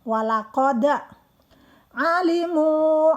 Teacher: keluarnya dari tenggorokan bagian belakang. Mu 2 harokat karena ada waw mati atau waw sukun. · Karena memang hukumnya adalah huruf da itu salah satu huruf qalqalah. Qalqalah itu hurufnya memantul, jadi memang harus bunyi da.